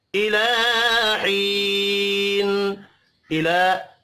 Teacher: تنوین کے بعد حروف حلقی ہے، یہاں پر اظہار حلقی ہوگا، غنہ نہیں ہوگا۔ الہین، الہ لام کے اوپر کھڑی زبر ہے، ایک الف کے برابر کھینچ کر پڑھیں گے۔